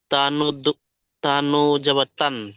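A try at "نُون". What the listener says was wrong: তা নু বলছেন কেন? নুন বলুন।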